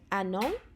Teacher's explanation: fel arfer byddwn ni'n dweud an, ond oherwydd mae'n dilyn gan llyfariad, sôn o'r llyfariad, y vowel sound, byddwn ni'n dweud anon, a wedyn yr un peth fel an hamburger.